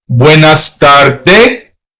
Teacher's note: some Hispanic countries tends to leave off the S